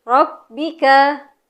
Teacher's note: dari ro ke ba-nya ditempelkan lagi Bu, karena di huruf ba ada tasydid